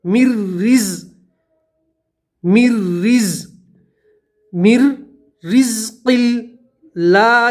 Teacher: نون نہیں پڑھیں گے, می کو سیدھا را سے ملا دیں گے اور را باریک پڑھیں گے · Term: ادغام بلا غنہ